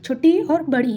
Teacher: तालव्य स्वर कौन सा होता है तो छोटी ई और बड़ी ई होता है